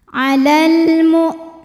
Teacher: ada hukum alif lam yang dinamakan dengan alif lam qamariah sebab alif lam menghadapi huruf qamariah yaitu mim maka lam sukun dibaca dengan jelas atau disebut dengan izhar qamari Alal muu hamzahnya kita tekan ini · hamzahnya kita tekan ini punya sifat dari segi suara namanya syiddah